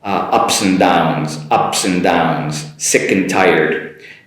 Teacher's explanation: My “and” cuts off the “d” pretty much and just an “n” sound in between them